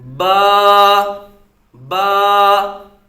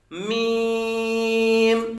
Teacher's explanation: با دونوں ہونٹوں کے تر حصہ سے اور میم دونوں ہونٹوں کے خشک حصے سے ادا ہوتا ہے